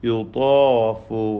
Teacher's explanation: ത്വാഇനും അലിഫിനും തഫ്ഖീമാണ്